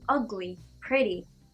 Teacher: you stress the first syllable UGly, PREtty